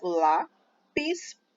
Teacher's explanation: essa palavra tem duas sílabas lá PIS e a sílaba tônica é a penúltima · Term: paroxítona